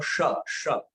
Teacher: श अर्थात जीभ तालू को लगी। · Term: तालव्य श